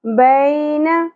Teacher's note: या साकिन से पहले ज़बर हरफ लीन नरमी से अदा होगा , बै नहीं पढ़ना, बै न, ऐ अगेन या साकिन हरफ